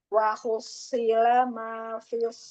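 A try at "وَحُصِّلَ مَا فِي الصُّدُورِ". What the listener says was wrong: Wahaus. Ya, hanya tipis ya. Tebal sodnya. itu iya, jangan tebal dari huruf hanya tetap hu baru ke desatnya. Haus, hus, wah, hus, haus, hus.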